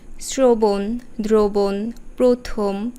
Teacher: র ফলা আছে এবং যেহেতু আকার নেই সেহেতু এখানে অ আছে এইসব ক্ষেত্রে আমরা অধ্বনির উচ্চারণ করব সংবৃত